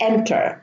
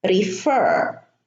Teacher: Enter is short, but refer is, the ER is a little bit longer.